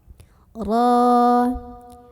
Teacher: Ro-nya dibunyikan secara tafkhim karena ro berbaris dan barisnya di atas, maka bacanya tebal.